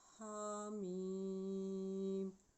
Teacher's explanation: ہا کے اوپر کھڑی زبر ہے، اس کو 1 سیکنڈ تک لمبا کریں گے